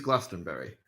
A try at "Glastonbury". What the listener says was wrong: Glastonbury. it's Glastonbury. You don't pronounce the U.